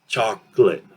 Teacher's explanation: The O is actually this ah sound, okay? And then we have that O reducing or disappearing